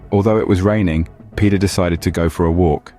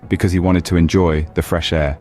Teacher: the intonation Rises at the end of each clause flaws and the stress falls on the words raining Peter walk and enjoy